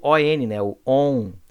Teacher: Esse ON aí presente é o que nós chamamos de dígrafo vocálico, tá? Que é o som da vogal nasalizado. E o N representa essa nasalização, tá?